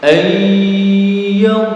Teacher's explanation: Jadi dimasukkan disertai mendengung, berarti ditahan ya.